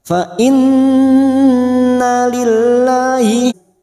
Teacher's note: Nun yang bertasdid gunna musadadah kita dengungkan selama tiga harakat